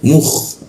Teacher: Nah, mu langsung ke kha dia. Mukh, posisinya kha itu ada di atas jakun dia. Mukh, ada seperti ngorok.